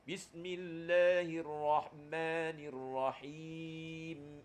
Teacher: bila tuan-tuan sebut saja mim dan Nun dia ada suara kut hidung · Ma ada suara kut hidung bismillahirrahman Ma ada suara hidung Bismillahirrahmanirrahim masa sebut him ada mim di hujung kan ada suara kut hidung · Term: sifat gunnah